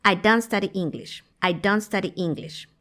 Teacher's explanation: En conversaciones reales, la T no suena.